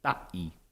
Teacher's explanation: in Mauke, there's a total closure with the glottal stop. They tend to say ta'i for one.